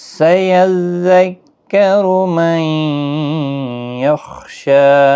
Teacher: दो तशदीद वाले हरफ साथ साथ में हैं, थोड़ा सख्ती के साथ पढ़ें ताकि तशदीद ज़ाहिर हो।